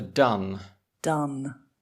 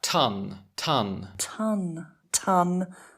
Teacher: Oh, there's more air with ton.